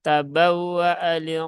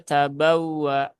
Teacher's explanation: pada huruf hamzah itu jelas terlihat di situ ada harakat fathah berdiri maka hamzahnya dibaca panjang